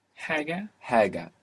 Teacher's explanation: this is the Habibi H, the breathy H, the Hari H